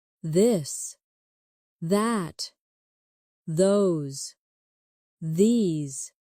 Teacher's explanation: your tongue touch your teeth lightly, but use your voice